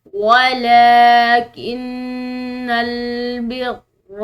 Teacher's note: ولیکن نون میں شدید ہے تو اس پر ہم غنہ کریں گے